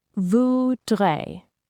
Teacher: The R sound is soft, made in the back of your throat.